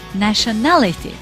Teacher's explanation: nationality, the stress was on the third syllable, na, the syllable na, nationality.